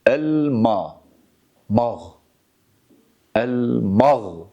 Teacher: Bakınız elma dersek bakınız sadece mimin sesine bakın. El mağ el mağ dediğimiz zaman mim harfi kalın sesle okunmuş olur ki bu caiz değildir.